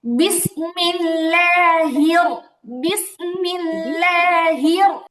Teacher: আবার আবার যেন হে না হয়, হা আবার একারের মতো যেন না শোনা যায়। হি বলেই র এর দিকে একটা উপরের দিকে উঠে যাবে।